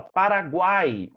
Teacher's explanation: Junção de uma semivogal, uma vogal e uma semivogal, formando apenas uma sílaba. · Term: tritongo